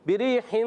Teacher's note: بریحن یا ساکن سے پہلے زیر یا مدہ ہو گیا, ایک الف کھینچیں گے. را کے نیچے زیر آ رہا ہے, را باریک رہے گی